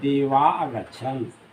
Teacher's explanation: देवाः में विसर्ग के पहले आ है और बाद में यह अस्वर है तो इस देवाः के विसर्ग का लोप हो गया।